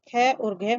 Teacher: हर वर्ग का दूसरा और चौथा वर्ण जैसे ख और घ महाप्राण है